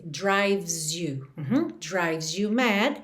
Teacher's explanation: o E de drives também não é pronunciado, você vai do V direto pro S